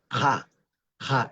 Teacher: Es un sonido que se que se produce atrás, es postvelar, ubular, se produce atrás y como consecuencia de la producción hacia hacia la parte de atrás de la cavidad bucal, entonces automáticamente hace que cualquier vocal que está cercana, junta o cercana, se abra la vocal.